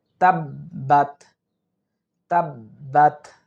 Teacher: যে তাদিদওয়ালা হরফ দুইবার উচ্চারিত হয় তাসদিদওয়ালা হরফ দুইবার উচ্চারিত হয় অর্থাৎ এখানে বা এর উপর তাজদিদ আছে তাহলে এই বা টাই দুইবার উচ্চারিত হবে